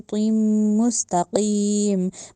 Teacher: मुस्तकीम का जो कौफ है उसको मोटा करना है, तकीम नहीं कहना, डंडे वाली काफ नहीं बनाना, तकीम भी नहीं कहना, तकीम कहना है, क्योंकि जाए मद्दा है, जहाँ से पहले जेर आ गई, तकीम नहीं कहना, तकीम कहना है, ठीक है।